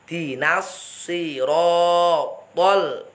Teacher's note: Dinas sirotol. Ro to itu langsung didorong karena ro itu tafkhim, ro fathah itu tafkhim. To itu huruf isti'la, artinya langsung moncong.